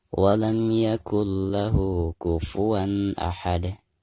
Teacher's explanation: ketika kita membaca lahu di sini harus dipanjangkan 2 harokat. Dihukumi madusilah qasirah karena hadomirnya itu tidak berhadapan dengan hamzah ya.